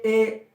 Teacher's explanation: जो ए है वो आ और ई से मिलके बनता है